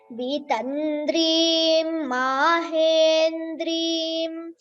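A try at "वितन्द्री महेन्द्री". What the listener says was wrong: it is not Vitandrim Mahendrim. There is no im there. It is Vitandri Mahendri in both the places.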